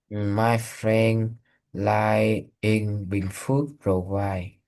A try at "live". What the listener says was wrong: Okay, so this word is pronounced live. The word you're thinking of is spelled like this. This word is life. This word is live.